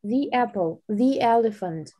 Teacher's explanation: Перед гласным через «и» читаем. · если мы ставим этот артикль перед гласным звуком, например, the apple, то произносим его через звук e